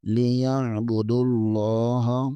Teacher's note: دال کو لام کے ساتھ ملائیں گے اور لام کے اوپر کھڑا زبر ہے، اسے بھی کھینچیں گے